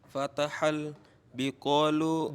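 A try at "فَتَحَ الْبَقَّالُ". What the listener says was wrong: Baqol ya, banyak di fathah.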